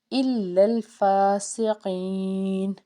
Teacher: فا کے اوپر کھڑا زبر ایک الف کے برابر کھینچیں گے